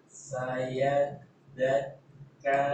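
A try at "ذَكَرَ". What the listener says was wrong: lidahnya kurang keluar lagi. Kurang rokhwa. Anginnya dijaga.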